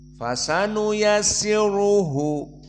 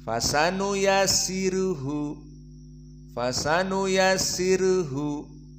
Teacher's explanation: Maka jumhur membaca dengan ra tafkhim